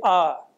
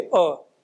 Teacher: तो आप बोलने में हमारा गला क्या हो रहा है? थोड़ा सा खुल रहा है, विकसित हो रहा है, लेकिन अ के उच्चारण में गला वैसा का वैसा ही रह रहा है। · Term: संवृत